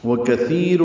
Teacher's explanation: واو ہونٹوں کی نا تمام گلائی سے ادا کریں گے. کاف باریک، تا نرمی سے ادا ہوگا.